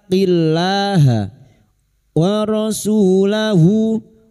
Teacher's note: Su dima diikuti wawu sukun 2 harokat mad tabi'i, 2 harokat kita panjangkan.